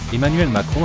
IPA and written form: ɛmanɥɛl makʁɔ̃ (Emmanuel Macron)